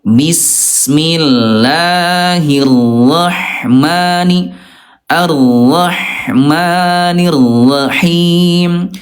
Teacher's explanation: huruf ha nih dia rokhawah, suaranya lemah mengalir dalam kondisi sukun ya.